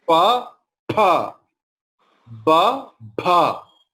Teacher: Two lips distinctly will touch together and pronounce pa, pa. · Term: Oshthavarna